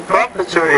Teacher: see the words professor, so put stress on the second syllable there